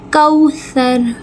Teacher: سا کو نرمی سے، رو کو پر کر کے، واو لین ایک الف کے برابر کھینچیں گے